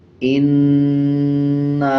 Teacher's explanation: الف کے اوپر چھوٹا مد ہے، اس کو 3 سیکنڈ کھینچ کے پڑھا جاتا ہے۔